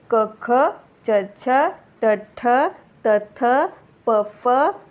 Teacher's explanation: कठोर व्यंजनाला अघोष व्यंजन म्हणलेला आहे श्वास व्यंजन म्हणलेल आहे आणि संस्कृत मध्ये त्याला विवार व्यंजन सुद्धा म्हणलेल आहे हे चारही